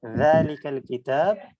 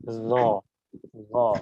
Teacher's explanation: এটা দাল দিয়ে হবে, একটু পাতলা এবং নরম উচ্চারণ